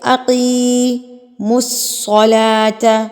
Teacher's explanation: لام کے اوپر کھڑی زبر ہے تو اس کو بھی آپ نے حروف مدہ جتنا ہی لمبا کرنا ہوتا ہے